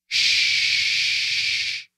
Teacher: there's no vibration right there's no vibration here it's just the sound and the wind